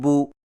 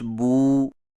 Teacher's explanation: سیدھی پیش کو ہونٹوں کو گول کر کے بغیر کھینچے اور جھٹکا دیے پڑھا جاتا ہے، جیسے بو تو سو، اور الٹی پیش کو ہونٹوں کو گول کر کے تھوڑا سا کھینچ کر پڑھا جاتا ہے